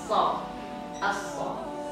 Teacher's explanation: karena huruf so tebal, maka dia harus di pangkal lidah harus terangkat. Ya, jadi huruf so sama dengan huruf sa, cuma dia tebal.